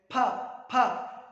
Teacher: Bilabial इसलिए कहा कि हमारे दोनों जो लिप्स हैं वो एक दूसरे के साथ टच कर रहे हैं।